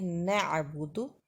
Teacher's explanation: عین ساکن کو درمیانے حلق سے نکالیں گے۔ نعبدو، بدو زبر زیر پیش کو ہمیشہ جلدی پڑھا جاتا ہے۔